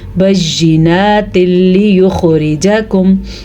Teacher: نون ساکن یا نون تنوین کو لام میں ملا دیتے ہیں اور غنہ بالکل نہیں کرتے، اسی لیے اس کو ادغام بلا غنہ کہتے ہیں.